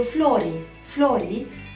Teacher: în limba japoneză vom lungi acea silabă de exemplu flori florii acel i pare un i lung nu este flori este florii